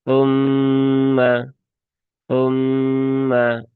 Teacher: Kemudian mimnya dia ee bertasdid ya di sini ya. Mimnya bertasdid maka dia ada ghunahnya ya · Mimnya bertasdid maka dia ada ghunahnya ya. ghunah musyaddadah maka tahan dulu tiga harakat ya sempurnakan ghunahnya · tetapi tu ya ujung lidah di gigi seri atas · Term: huruf ta, gunnah musyaddadah